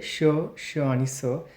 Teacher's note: यांना घर्षक असं देखील म्हटलं जातं कारण यांचा उच्चार करताना हवा थोडीशी घासली जाते